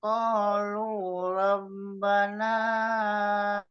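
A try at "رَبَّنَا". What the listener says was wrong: Itu Robbana itu 2 harokat aja, Pak. Ini Pak di ayun malah panjang banget. Tapi naknya 2 harokat.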